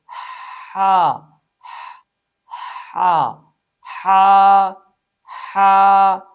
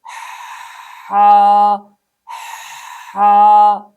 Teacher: number 1، بعض لوگ گلا گھونٹ کر اس حرف کو سختی کے ساتھ ادا کرتے ہیں، ہا ہا، جو کہ غلط ہے، اس لیے کہ ہم نے پڑھا اس حرف میں صفت رخوت ہے، صفت رخوت کی وجہ سے اسے نرم ادا کرنا ہے نہ کہ سخت ادا کرنا ہے